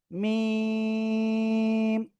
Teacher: দুই ঠোঁটের শুকনো জায়গা থেকে আপনাকে এই অক্ষরটা উচ্চারণ করতে হবে এবং এখানে 4 আলিফ টেনে পড়তে হবে